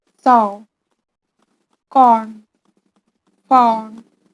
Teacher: O sound is Back vowel, which is long mid-back rounded vowel.